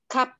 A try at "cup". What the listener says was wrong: Jangan lupa K-nya, jangan lupa P-nya, Miss. Ada ini bacanya. Cup.